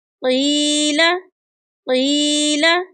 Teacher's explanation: یہاں پر یا ساکن ہے تو یہ یا مدہ کی مثال ہے، اس کو ایک الف کی مقدار کے برابر لمبا کر کے پڑھیں گے